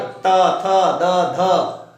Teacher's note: अब इसकी बात आ जाती है, इसे बोलते हैं जैसे त बोलते हैं, तवर्ग, त, थ, द, ध। त वर्ग को बोलने में जिह्वा दांतों से स्पर्श होती है